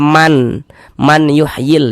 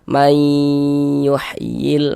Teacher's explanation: Jangan dibaca man yuhyil, jangan, tapi dibaca mai. Jadi bunyi nun sukunnya dimasukkan, melebur ke huruf ya dia. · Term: idgham bi gunnah